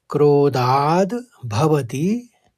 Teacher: क्रोधाद में ध के ऊपर आघात था तो पहले द का उच्चारण होगा फिर भवती निकलेगा